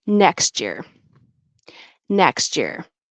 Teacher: I don't know if you guys heard that or not, but the t, t, t and the ch, ch, t, t, t turns into a ch